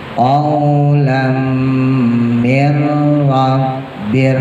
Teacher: nun mati ketemu ro-nya idgham bila guna